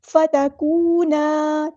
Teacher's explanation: فتکونا، تا باریک ادا کرنا ہے، کاف باریک ادا کرنا ہے اور واو مد آ گیا تو ایک الف کے برابر لمبا کرنا ہے، الف مد آ گیا تو مد اصلی کریں گے۔